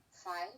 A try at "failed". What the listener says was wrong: No, this is failed, but filed also, okay, have rather has the same final sound. So this one is failed, while this one, single L, it's filed. So that's the difference.